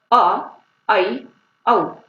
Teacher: अर्ध विवृत, मुख द्वार आधा खुला हो